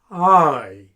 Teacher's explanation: it's very like beginning a vowel with a whisper. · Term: English H